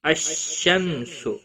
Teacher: ال کے بعد جب بھی حروف شمسی کا حرف آگے آتا ہے تو ال نہیں پڑھا جاتا ہے